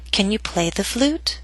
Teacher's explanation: It first hits the ground and then bounces up into the air. So down a little bit on play and then start rising up, up, up until the end of the question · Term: Rising intonation, rising intonation